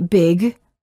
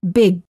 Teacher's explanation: hold a final g Sound by making sure that your tongue remains up in the back of the mouth